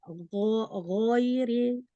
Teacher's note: Kayaknya masih agak rawan ada jadi kayak ada udara di dalam ghainnya. Nah, jadi ghain itu kan sifatnya bukan hamas ya. Dia jahar. Nah, tertahan nafas. Jadi benar-benar enggak itu kayak ada nafas.